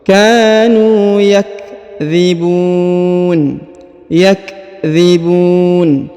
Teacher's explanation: Huruf bu dipanjangkan boleh 2, boleh 4, boleh 6 ya, karena di depannya terdapat waw sukun ya sebelum huruf pemberhentian, dan huruf pemberhentian huruf na disukunkan atau dimatikan. · Huruf nu dipanjangkan 2 harokat karena terdapat waw sukun